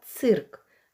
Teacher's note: цирк звук ц твердий приголосний ци звук и голосний цирк приголосний твердий чи м'який цирк твердий